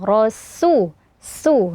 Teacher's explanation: ada samar-samar antara sin dan sod ya. Tapi dibaca tipis dia